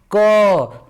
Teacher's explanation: जैसे हमको क बोलना है तो देखिए हम बोलते हैं क, तो लास्ट में अ का उच्चारण आ रहा है,